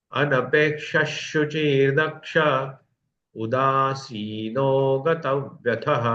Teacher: ये दक्ष के बाद भी विसर्ग है, उसके बाद स्वर आने के कारण उस विसर्ग का लोप हो गया